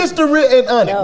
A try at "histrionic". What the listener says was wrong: histrionic, not history.